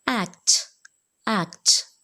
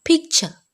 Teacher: When a plosive sound is followed by another plosive or an affricate sound in the same word, the first plosive is not fully pronounced. Such plosives are incomplete plosives.